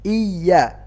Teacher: ini tasydid ya, bukan mat, bukan panjang